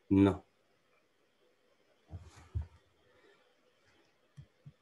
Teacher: there is no airflow through the mouth, but there is still airflow through the nose. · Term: nasal stops